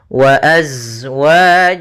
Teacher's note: mim mati bertemu dengan huruf wau maka ini kita namakan dengan hukum tajwid berupa izhar syafawi maka suara mimnya harus dibaca dengan jelas tidak boleh ditahan